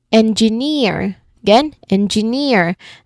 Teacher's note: the suffix draws the stress all the way to the end